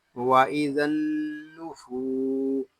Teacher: سین حروف صفیریہ میں سے ہے، اس کو ادا کرتے وقت سیٹی کسی طرح آواز آئے گی۔